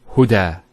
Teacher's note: There's the elongation as well, because the Fatha followed by an Alif.